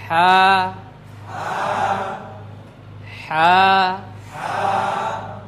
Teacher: হলকের মধ্যখান থেকে আমাদের যে গলাটা রয়েছে তার মধ্যখান থেকে এই মাখরাজটি এটা দুই নাম্বার মাখরাজ শুরুতে রয়েছে।